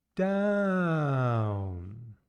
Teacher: come down in pitch from a higher sound to a lower sound